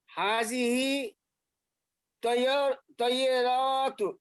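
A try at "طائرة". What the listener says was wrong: তয়রাতুন টান দেন কেন, লম্বা করেন কেন? তয়রাতুন। হাজিহি তয়রাতুন।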